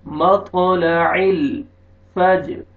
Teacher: جیم پہ قلقلہ double sound آئے گا